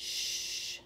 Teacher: you can feel your tongue in the middle of your tongue raising up to the roof of your mouth and kind of making that airway constricted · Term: middle of our tongue